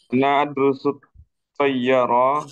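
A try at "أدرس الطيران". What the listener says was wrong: Baik, al-qiraah cara bacanya ana adrusut toyaron, tidak ada tasdidnya.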